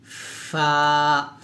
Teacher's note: নিচের ঠোঁটের পেট সামনের উপরের দুই দাঁতের আগার সঙ্গে লাগিয়ে ফা উচ্চারণ করতে হবে নরম করে